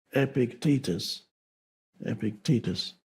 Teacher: I used to say Epictetus, and then I realized that the stress is on the second syllable